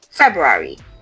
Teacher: There is a clear R sound after the Feb.